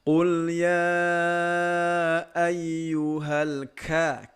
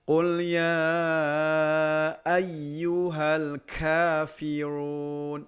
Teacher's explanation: Di sini huruf pertama huruf kaf. Huruf kaf itu sifatnya hamas, walaupun dia termasuk huruf-huruf syiddah tetapi punya sifat keluar udara.